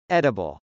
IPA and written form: ˈɛdəbəl (edible)